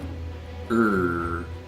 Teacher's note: The weirdest thing is that the sides of the tongue are sort of coming up. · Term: American molar r